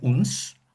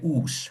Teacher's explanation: If we have an N or an M, if we have a nasal sound, so N or before a fricative, which is a sound that produces friction, so f or s, that N drops out in the Old period, and so Old English, Old Frisian period, um, and the vowel that precedes that sound is lengthened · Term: Long vowel, no n